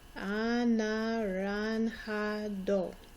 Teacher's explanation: Notice the J sounds like an H. The A sounds like the ah sound that an O would make in English.